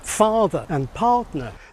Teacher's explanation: this fake pseudo British accent was non rotic so that it didn't pronounce the r sounds